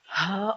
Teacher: دیکھیں کہ اللہ کا لفظ حمزہ سے شروع ہوتا ہے اور ہا پہ اینڈ ہوتا ہے، جو مخارج میں سے سب سے آخری مخرج ہے، اقصی حلق